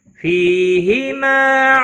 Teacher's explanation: ما الف مدہ ہے ایک الف کے برابر کھینچ کر پڑھیں گے